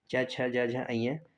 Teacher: तालव्य वर्ण में च वर्ग आता है